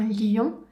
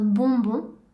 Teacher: la bouche prend la même forme que pour le son O et ensuite le son devient nasal. Encore une fois en gardant la langue à plat dans la bouche. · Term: son ON